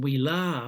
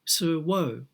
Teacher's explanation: Similarly, in the ablative singular, rather than we la with that long a, we find sur wo with a long o. So the a vowel is changing to an o vowel.